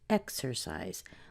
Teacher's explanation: exercise is a three syllable word we're going to put the majority of the stress on the X we have a weak syllable on the a and then a